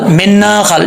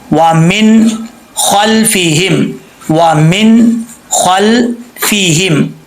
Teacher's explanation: نون میں قلقلہ نہیں کرنا، وامن خل، من خل، یہ غلط ہے، مسٹیک ہے، ایسے نہیں پڑھنا.